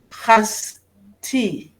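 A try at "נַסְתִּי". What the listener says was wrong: That's a nun.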